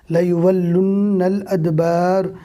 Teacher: واو کو لام سے ملائیں گے، لام کو نون سے ملائیں گے، اس لیے کہ لام اور نون دونوں پر تشدید ہے